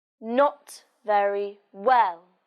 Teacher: In this sentence, the stress is on not and well.